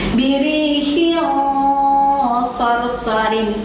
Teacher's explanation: harus ditebalkan bunyinya, ikhfa-nya, dengungnya, gitu ya. Dan harus disertai dengan gunnah.